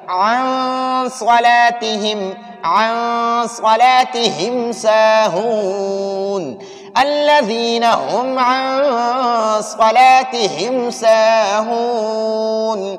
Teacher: غنہ کریں گے، ناک میں نون ساکن کو چھپائیں گے